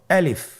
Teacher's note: গলা এবং মুখের শূন্যস্থান হতে আলিফ হরফটি উচ্চারিত হয়।